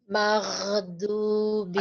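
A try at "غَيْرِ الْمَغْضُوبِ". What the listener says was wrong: Ada e-nya masih kecil, Bu. Ada e kecil. Ada sedikit masih kedengeran ya. Coba disempurnakan aja deh.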